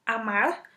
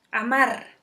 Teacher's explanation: esa R final puede ser vibrante simple, amar, o vibrante múltiple, amar, y el significado no cambia. El carácter distintivo se ha neutralizado.